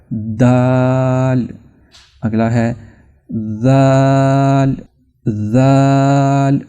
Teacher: ये जो दाल की आवाज है यह जुबान का जो अगला किनारा है इसको जब ऊपर वाले जो दांत होते हैं सामने वाले उनके दरमियानी हिस्से से जब आप टच करेंगे तो दाल पैदा होगा।